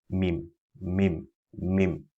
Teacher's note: we pronounce mim by closing the two lips together with a gunnar sound.